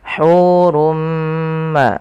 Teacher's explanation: tanwinnya masuk kepada huruf mim dan diganti bunyinya menjadi Bunyi mim maka hurumma maka ini hukum tajwidnya kita namakan dengan Idgham bighhunah